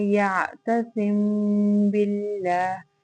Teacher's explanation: جب میم ساکن کے بعد حرف با آ جائے تو وہاں پہ ہم غنہ کے ساتھ اخفاء کریں گے، اور اس کی مقدار جو ہے وہی 1 الف کے برابر یا 2 حرکت کے برابر ہوگی. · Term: اخفاء شفوی